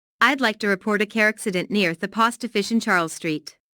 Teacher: Notice how the key words car accident, post office, and Charles Street are stressed.